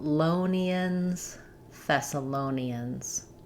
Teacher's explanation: Thessalonians. Uh we stress on the low syllable.